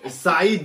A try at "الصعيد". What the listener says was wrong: لا السعيد بالصاد. بالصاد